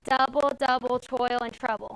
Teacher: There's 4 syllables. Okay, the reason why it's trochaic is because the accent is long then short